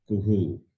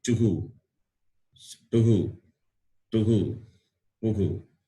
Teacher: Visarga takes the sound of the vowel U. Kuhu, not Kuha.